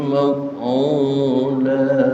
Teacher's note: Cuma 2 harokat, madnya mad iwad.